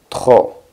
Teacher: La P, que es una consonante y va al final de esta palabra, no suena. Sería trop.